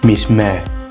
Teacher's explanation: miss mai in the cornish language miss mei and you see that diphthong's been completely lost